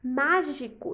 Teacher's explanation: Mágico tem a antepenúltima sílaba tônica e é uma proparoxítona.